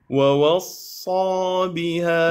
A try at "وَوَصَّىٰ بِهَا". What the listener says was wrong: لا، كان الأولى جبت الصاد مضبوطة نوعا ما لكنه فخمت الواو الثاني، الآن رققت الواو الثانية لكنه صاد ما مفخمة مرتبتها. ووصى بها ووصى بها.